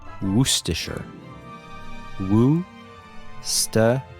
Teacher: The trick is to emphasize the first syllable and to blend the last syllables together.